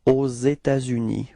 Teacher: There is this liaison between this final S of État and then this U